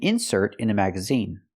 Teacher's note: it's a noun we put the stress on the first syllable